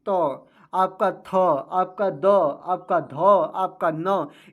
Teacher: जो आपकी जीवा है वह दंत पर रगड़ करेगी या दंत पर लगाने से इसका उच्चारण हो रहा है · ये सभी उच्चारण करने में जो आपकी जिह्वा है वह दंत पर रगड़ करेगी